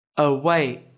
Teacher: từ nay có hai âm tiết trọng âm rơi vào âm tiết thứ hai